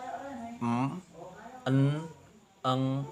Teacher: If produced a long sequence, then without moving your thumb from the position for alveolar closure, you will feel your soft plate moving up and down. The three types of closure are bilabial lips, alveolar tongue blade against alveolar ridge, and velar back of tongue against the palate. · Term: nasal consonants